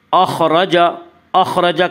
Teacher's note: اخرج کے را کو پر پڑھا جائے گا، اس کا قاعدہ ہے کہ را کے اوپر زبر اور پیش آئے تو را کو پر پڑھا جائے گا، را کے نیچے زیر آئے تو را کو باریک پڑھا جائے گا، یا را کے اوپر زبر اس سے را کو پر پڑھیں گے۔